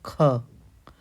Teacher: अघोष महाप्राण ध्वनि कौन सी है? ख।